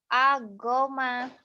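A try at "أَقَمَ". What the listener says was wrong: Go melulu dari tadi. Ko baju koki, koko. Bukan gogo. Kalau go ini dari titiknya jadi go ya. Dari tadi salah melulu tuh. Akoma, bukan agoma ya.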